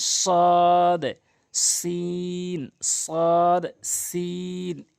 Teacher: সদটা মুখ গোলাকার হবে হালকা আর সিনটা মুখ ওসার হবে, সদ সিন, সদ সিন, এভাবে।